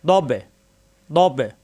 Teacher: বা এর সাথে বা সাকিন কলকলা ধাক্কা হবে